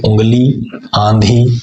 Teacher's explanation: ऐसे स्वर नाक से बोले जाने के कारण अनुनासिक कहलाते हैं